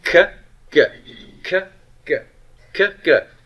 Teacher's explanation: The only difference between a kappa and a gamma is voicing. Vocal cord vibration.